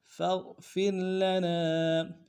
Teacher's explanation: فا کو غین کے ساتھ ملانا ہے، غین کو موٹا ادا کریں گے ، اگلے فا کو را کے ساتھ ملانا ہے، اور را